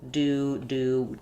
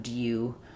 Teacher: it is an element of the American accent to have this yod dropping before these certain consonants or after these certain consonants with oo sounds.